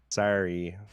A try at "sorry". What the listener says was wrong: You still have Canadian twang on it when you say it, trying to not.